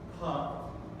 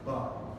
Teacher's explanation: you probably noticed that in the P sound, pa, there is more air being released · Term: unvoiced